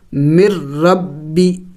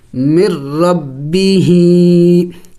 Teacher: ادغام کہتے ہیں ایک حرف کا دوسرے حرف میں داخل ہو جانا، تو یہاں پہ ادغام ہو چکا ہے، نون کو نہیں پڑھیں گے۔ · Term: ادغام بغیر غنہ